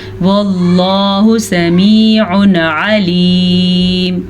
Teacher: لفظ اللہ سے پیچھے والے حرف کے اوپر زبر ہے تو لفظ اللہ کو ہم پر پڑھیں گے